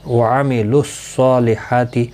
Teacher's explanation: واو الف الف لام یہاں پر حذف ہو جائیں گے. صاد مستعلیہ ہے، پر پڑا جائے گا، اور اس کے اوپر کھڑی زبر بھی ہے، ایک الف کی مقدار کے برابر کھینچ کر بھی پڑھیں گے.